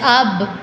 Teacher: مثلا حرف با, با پر اگر جزم آ جائے تو ادائیگی کے وقت دونوں ہونٹ آپس میں مل کر الگ ہو جاتے ہیں اور اس طرح قلقلہ ہو جاتا ہے